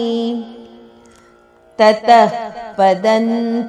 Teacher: ಇಲ್ಲಿ ತತಃ ತದ ನಂತರ ಬಂದ ವಿಸರ್ಗದ ಉಚ್ಚಾರಣೆ ಮಹಾಪ್ರಾಣ ಫ ಅರ್ಧದಷ್ಟು. ತತಃ ಪದನ್ ಪದನ್ ಅನುನಾಸಿಕ ನ.